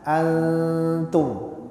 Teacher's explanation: Ikhfa itu menyamarkan. Jadi nunnya jangan dijelaskan tapi disamarkan. Antum. Jadi pada saat kita mengucapkan huruf bibir kita ini, lidah kita, mulut kita ini memposisikan ke huruf ta.